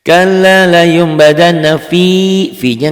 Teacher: Kalla layun badan, hitam-hitam badan, coklat ini selain nyamber dan double karena warna coklat ada ditahan, ada panjangnya. Selain ada panjangnya juga ada dengungnya karena ini huruf gunnah, dengung ke hidungnya.